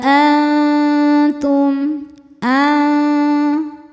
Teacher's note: Ada hukum ikhfa hakiki aqrab karena nun sukun bertemu dengan huruf ta. Cara bacanya nun disamarkan ke ta disertai dengung. dengungnya sedikit, kesamarannya atau suara yang keluar dari mulut masih banyak.